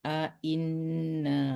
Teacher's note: A inna jangan dipanjangkan di a-nya.